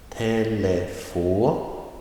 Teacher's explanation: The second word, telefoner, that is on the second to last syllable.